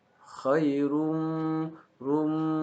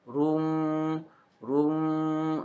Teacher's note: Jadi ada bunyi yang memang keluar dari hidung atau tidak hanya huruf waw. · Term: idgham bi gunnah